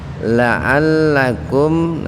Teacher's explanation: mim sukun bertemu ta, jadi membacanya dibaca jelas di bibir. Tahan 2 ketukan. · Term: idhar safawi